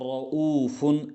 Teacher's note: ये रा भी पुर पढ़ा जाएगा क्योंकि इस रा पर ज़बर आई है।